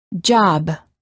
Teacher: If we quickly open our lips, we can then release the stop and say job.